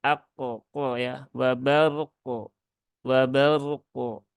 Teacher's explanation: rnya dibaca tebal tunaikan tawasutnya kemudian qofnya wajib diqalqolahkan ya jangan dihilangkan